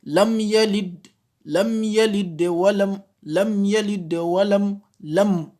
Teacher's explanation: on prononce les mimes avec un soukoun de manière claire, sans l'assimiler avec le yalid, avec le ya qui suit. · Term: al-izhar